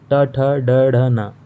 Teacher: ये भी मूर्धन्य के माध्यम से बोला, मूर्धा के माध्यम से बोला जाता है। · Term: ट वर्ग